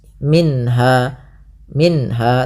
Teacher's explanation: Kemudian pada lafal minha ada bacaan izhar halqi, yaitu suara nunnya dibaca dengan jelas